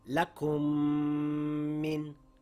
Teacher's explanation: So if I am going to read these two words, it will read as lakum min. I closed my lips, the M sound came through the nasal passage, and I held it for two counts. · the two memes will merge together and the sound is made entirely by the nose through the nasal passage, holding it for two counts, keeping your lips closed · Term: idgham with ghunna